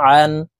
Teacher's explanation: এই আইন হরফকে হলকের মধ্যখান থেকে চাপ দিয়ে উচ্চারণ করতে হবে, কারণ আইনের মাখরাজ হলকের মধ্যখান থেকে হবে।